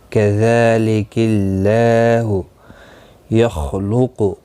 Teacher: خا اور قاف دونوں مستعلیہ ہیں، پر پڑھے جائیں گے